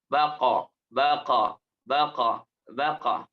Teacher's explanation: pangkal lidahnya Din aktifkan saja AB ba AB IB UB sedangkan huruf q memerlukan pangkal lidah yang terangkat · kalau huruf ba Ini mantulnya ab ab biasa saja hanya mendatarkan pangkal lidahnya